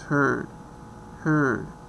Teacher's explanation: it's middle, rounded, tense, yes is R coloring, it's long, and the examples that we have is heard, heard.